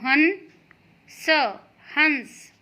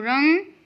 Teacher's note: न की आवाज़ नाक से आ रही है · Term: बिंदु